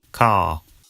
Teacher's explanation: in car the vowel sound is lengthened in place of the r sound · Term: non- Ric